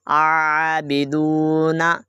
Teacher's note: یہاں پہ حمزہ نہیں پڑھیں گے، عین کو ادا کریں گے